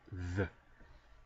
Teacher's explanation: if you want to make the voiced counterpart, the, just vibrate your vocal cords